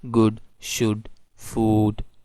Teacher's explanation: ऊ जो है वावल है तो लिप्स जो है वो थोड़े राउंड हो जाते हैं, करीब आ जाते हैं